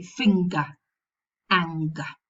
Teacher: In the middle, not at the end. If the sequence occurs in the middle, we pronounce both, the velar nasal and the g.